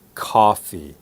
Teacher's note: standard American and Canadian English would be coffee the O has an ah sound